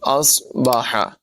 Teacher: قل ارأیتم ان اصبح، صاد کی آواز پر ہوگی، اصبح، صاد میں سیٹی کی آواز نمایاں کریں گے